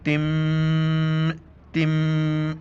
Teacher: ہمیں غنہ کرنا ہے، جیسے تا میم دو زیر تم، تم، ایک گنگنانے جیسی آواز ناک میں پیدا ہو جاتی ہے